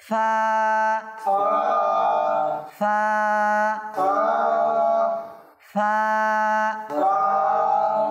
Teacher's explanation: প্রথমে আমাদের উপরের দাঁতের আগা নিচের ঠোঁটের বীজাংশে লাগিয়ে দিব, এরপর বাতাস ছেড়ে দিব, অটোমেটিক আমাদের ফা উচ্চারণ হয়ে যাবে।